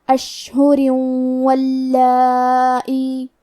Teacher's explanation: کلمت واللائی میں مد واجب متصل کو ادا کریں گے اور اپنی آواز 4 مد کے برابر لمبی کریں گے